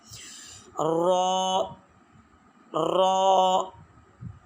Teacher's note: اس کو ادا کرتے ہوئے ایک تو اس میں بار بار زبان دانتوں کے سروں کے ساتھ نہ ٹکرائے ورنہ تکرار پیدا ہو جائے گا اور یہ لفظ غلط ادا ہوگا۔